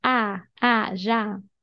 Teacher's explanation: We have this accent, so it's an open vowel sound. Já. Open your mouth.